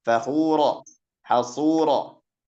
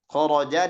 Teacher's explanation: Khuro itu ketebalan khuro lebih sedikit dibandingkan khoroja.